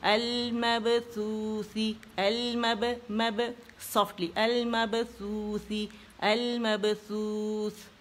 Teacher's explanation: यहाँ पे होंठ गोल हो जाएंगे सा के ऊपर